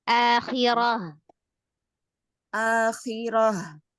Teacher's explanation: H besar itu dari tenggorakan bagian bawah